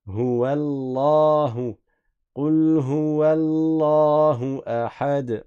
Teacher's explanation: Le nom Allah, le lam, il est prolongé. Même si vous ne voyez pas de alif comme ça visible, mais c'est connu que le nom de Dieu, on prolonge le lam.